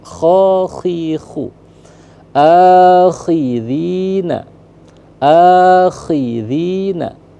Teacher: kha khi khu di langit-langit mendekati pangkal tenggorokan